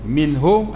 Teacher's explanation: Minhum atas nun ada tanda mati, jangan dengung.